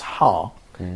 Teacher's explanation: You are actually also employing the muscles of your pharynx. And also, we don't have any voicing or any vibration in the vocal flaps at our larynx